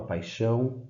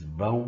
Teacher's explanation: paixão e vão são oxítonas porque a sílaba tônica é a última